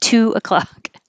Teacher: American English uses a burst of air, and it might sound like ch, like a ch sound, and that's good because that means you've held the air back with your tongue behind your top teeth and then built up pressure behind your tongue and then push the air out to release it with that sound too. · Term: the good T